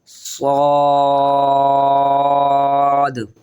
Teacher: جیب کی جو سائڈ ہوتی ہیں وہ ہلکی ہلکی اوپر کی اور مڑ جائیں گی، اور موٹا کر کے پڑھیں گے اس کو